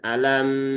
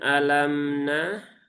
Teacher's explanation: Mim punya sifat tawasut, ya, yaitu di antara syiddah dengan rokhawah. Atau kalau sebagian ustadz itu mengatakan mengalir sebagian.